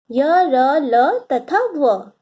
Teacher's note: अंतःस्थ व्यंजन वैसे व्यंजन को कहते हैं जिन व्यंजनों का उच्चारण करते समय आपकी जीभ मुख के किसी भाग को नहीं छूती, उन्हें अंतःस्थ व्यंजन कहते हैं। ये अंतः भाग में स्थित है।